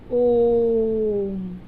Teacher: दीर्घ स्वर से भी अधिक समय लग रहा है ना, तो ये स्वर क्या कहलाते हैं? प्लुत स्वर कहलाते हैं।